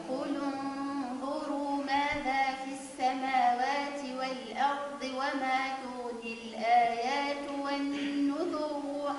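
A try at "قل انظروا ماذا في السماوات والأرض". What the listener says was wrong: لا مفيش مد.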